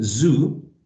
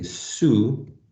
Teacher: when we're saying zoo, the vocal cords are vibrating. Whereas when we say su, the vocal cords are not vibrating.